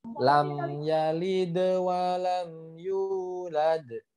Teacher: dal yang pertama maupun dal yang kedua itu tetap harus dibaca qalqalah